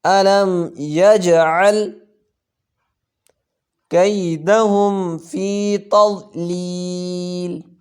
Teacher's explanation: جیم حروف قلقلہ میں سے یہاں آ رہی ہے تو اس پہ قلقلہ کریں گے